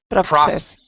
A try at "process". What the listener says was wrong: No K sound. Process.